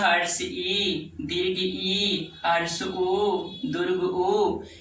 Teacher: जिस स्वरों के उच्चारण में मुख्य द्वार लगभग बंद रहता हो उसे संवृत वर्ण कहते हैं। जैसे हर्ष ई, दीर्घ ई, हर्ष उ, दीर्घ उ, इसमें आधा मुंह नहीं के बराबर खुलता है।